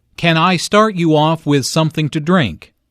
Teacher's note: Notice how the question starts with can. Since this is a yes-no question, the intonation rises at the end.